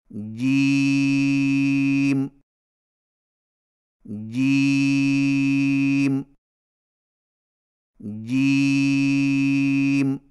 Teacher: جیم کی ادائیگی میں زبان کے درمیان کو تالو کے ساتھ سختی سے لگا کر باریک آواز میں پڑھیں · जिम की अदायगी में जुबान के दरमियान को तालू के साथ सख्ती से लगाकर बारीक आवाज में पड़े यानी गीम के गीत कि गीम और याद रखें कि जिम